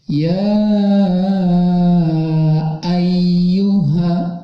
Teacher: Tapi karena si alif yang sebelumnya ada fathah ini bertemu hamzah dalam 2 kalimat, maka panjangnya bukan 2 harokat lagi, tapi ketika mad tabi'i bertemu hamzah dalam 2 kalimat, panjangnya sampai 6 harokat. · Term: mad jaiz munfasil